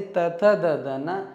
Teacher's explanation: ಹಲ್ಲುಗಳ ಸಹಾಯದಿಂದ ಉಚ್ಚರಿಸ್ತಕ್ಕಂತಹ ಅಕ್ಷರಗಳು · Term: ದಂತ್ಯ